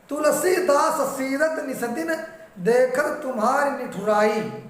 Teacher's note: श्रुत्यानुप्रास में दांत और ओठ के स्थानों से उनकी आवृत्ति होती है